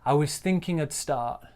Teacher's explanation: stress on thinking, and then we're going to stress that verb start there